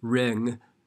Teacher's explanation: And if you listen to that, it sounds very much like you're saying an E sound instead of an I sound. You can carefully say ring, but it sounds a little bit too nasal, like you have a cold. So we kind of E it because we're flattening out the mouth to say that ng sound, and so it changes the quality of the vowel.